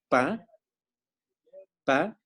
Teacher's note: cuando nosotros decimos la P, la pa, el sonido, el aire, está obstruyéndose completamente. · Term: consonantes oclusivas